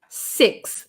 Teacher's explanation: And then there's a like kind of a breathy TH, like in sixth.